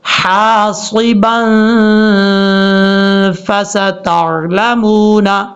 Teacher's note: آواز ناک میں جا رہی ہے یہ غنہ ہے، یہاں پر نون تنوین کا غنہ ہو رہا ہے